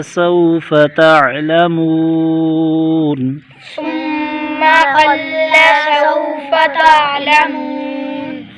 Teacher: واو ساکن سے پہلے زبر ہے، یہ واو لینا ہے بغیر کھینچے بغیر جھٹکا دیے، نرمی سے معروف پڑھیں گے۔ تا، عین کو گلے سے نکالیں گے، منہ پر واو مدہ، یہاں پر سکون عارضی تو مدے عارض ہوگی یعنی تین الف کھینچ کر پڑھیں گے۔